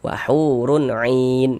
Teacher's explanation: 'Ain dibaca panjang. Nah, ini namanya mad arid li sukun lagi.